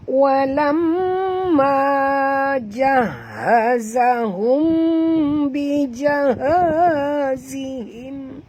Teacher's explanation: Sebab sini saya tak boleh nak panjang-panjang kerana tuan-tuan puan tengok sini berapa banyak huruf susah nak sebut ya. Ada 4 huruf ha. 1, 2, 3, 4. Tak sampai nafas. Ya. Sebab ha tu keluarnya daripada halqum, tempat kita bernafas.